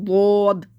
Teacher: ضاد منہ بھر کے پڑھنا ہے، یعنی کہ ہماری زبان جو اوپر تالو کو ڈھانپ دے گی، ضاد۔ آپ کو اندازہ ہو رہا ہوگا میں نے منہ میں زبان کہاں لگائی ہے۔